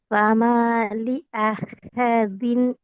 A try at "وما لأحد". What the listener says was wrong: ஹேவ் நீட்டக்கூடாது. நீட்டக்கூடாது. وما لأحد. وما لأحد أحد م. وما لأحد م.